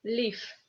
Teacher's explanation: In the end of the word, this V becomes F